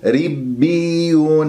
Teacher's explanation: الراء مكسورة مرققة من ربيون، والياء مشددة والباء مشددة